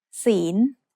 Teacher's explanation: The final consonant is ลอลิง which makes a sound like the letter N in this position. ศีล is said with a rising tone because it has a high-class consonant with a live syllable ending.